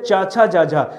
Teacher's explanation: जैसे च छ ज झ तो आपका जीभ जाके तालू को स्पर्श कर रहा था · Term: तालव्य